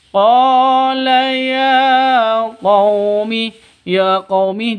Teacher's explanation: seperti seperti itu wujuh [Musik] yain khiah kita lanjutkan q ya quumi laisa biolalah qa ya quumi qola qo panjang dua ketukan Karena ada alif diawali dengan fat fathah. Alif sebelumnya fathah panjang dua ketukan. Mad asli atau mad thobi.